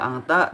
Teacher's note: di sini ada ikhfa karena di situ ada nun sukun atau nun mati yang bertemu dengan huruf ta